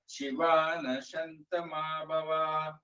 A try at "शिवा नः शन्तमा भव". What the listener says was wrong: ಶಿವಾನಃ ಅದೇ ಸಾಕ್ಷಾವತ್ತು ಒತ್ತಬೇಕು ಶಿವ ನಶಂತಮಾ ಭವ ಶಂತಮಾ ಭವ ಸಾಕ್ಷಾವತ್ತು